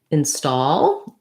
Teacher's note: i'm highlighting that stall is a stressed syllable here